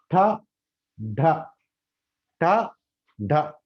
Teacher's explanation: ఆల్వేలర్ దగ్గర ఈ టాడా అనేది గాలిని పూర్తిగా ఆపేస్తున్నాం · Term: ప్లాజివ్